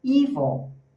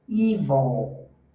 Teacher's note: o estresse está na primeira, está no E, e esse I, ele é um I com energia.